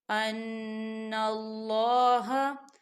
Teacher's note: نون مشدد ہے تو یہاں غنہ ہوگا